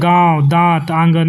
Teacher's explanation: अनुनासिक स्वरों के उच्चारण में वायु ध्वनि मुख के साथ साथ नाक से भी निकलती है